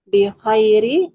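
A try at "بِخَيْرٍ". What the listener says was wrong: Nah, di situ ada tanwin. Ada tanwin di huruf ro. Gimana cara baca tanwin? Bi khairi atau bi khairin?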